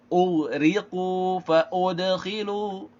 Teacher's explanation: Ini ghain tebal karena memang dia kan isti'la ya, ghain sukun. Kemudian qaf juga memang isti'la juga.